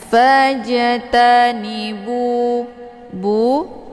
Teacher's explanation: Ini dinamakan dengan mad tabi'in zahiri. Dibacanya panjang 2 harokat karena ada waw sukun sebelumnya harokat zummah.